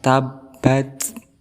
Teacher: suara hentakan tabbat kemudian setelah huruf ba ada huruf ta huruf Ta ini termasuk huruf hams dia disifati Dengan Hama berarti ada nafas yang keluar ataupun angin yang keluar tapi sedikit · ba di tasdikan Berarti ada suara hentakan tabbat kemudian setelah huruf ba ada huruf ta huruf Ta ini